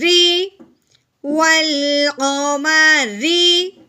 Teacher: اب ہے را کی باری، را کے نیچے کیا آ گئی ہے، زیر، را کے نیچے جہاں بھی آپ کو زیر نظر آئے گی اس را کو ہم نے باریک کر کے پڑھنا ہے، موٹا بالکل نہیں پڑھنا، یعنی شروع میں ہم اس کو را پڑھیں گے، جو اس کی لاسٹ والی آواز ہوگی وہ ہم نے اس کو باریک کرنا ہے، ٹھیک ہے، را زیر ری، والقمری، ٹھیک ہے۔